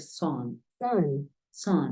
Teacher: decir San pero empiezas a decir Son son son o sea como si tu intención fuese decir una a pero terminas diciendo una o